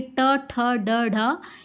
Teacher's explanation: मूर्धा में दोस्तों आपकी जिह्वा जो है थोड़ी सी मुड़ जाती है